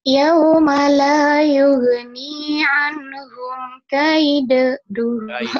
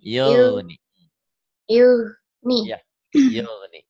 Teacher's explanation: Yugnya jangan yuge, jangan yuh. Jangan ada e-nya. Jangan ada ngokoh.